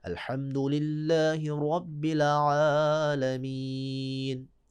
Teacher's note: رب کے سر پر زبر ہے، لہذا را کو موٹا پڑھ رہے ہیں